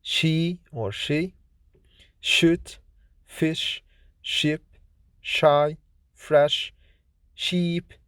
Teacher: Sh is voiceless, fortis, palato-alveolar, fricative consonant